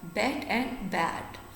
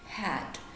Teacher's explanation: Your mouth will be less open while pronouncing left and will be more open while pronouncing hat.